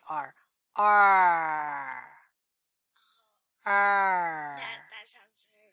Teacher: the r sound our tongue is in the middle closer to the top not touching the bottom it would be very hard to say the r sound with